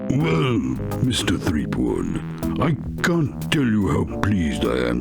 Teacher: That guy's just one big vocal fry resonating in my eardrums.